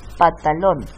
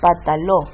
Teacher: Y ahí estamos en presencia de una omisión de consonante trabante o también llamada omisión de coda silábica